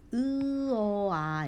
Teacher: 점점 입이 벌어지고 혀의 위치는 내려간다